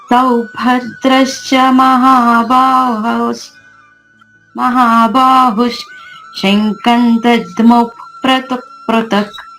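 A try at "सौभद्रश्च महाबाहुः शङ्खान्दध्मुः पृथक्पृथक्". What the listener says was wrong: శంఖాన్ అక్కడ దీర్ఘం ఉందమ్మా.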